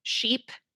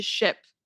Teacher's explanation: For example, sheep and ship. That E sound in sheep is going to be a little bit longer, a little more exaggerated compared to that short I in ship.